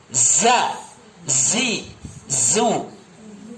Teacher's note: Ya, kalian juga banyak berapa ya zai, ingat zai itu ditekan. Desis